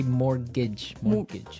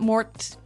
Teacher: it has a t in it but you don't pronounce it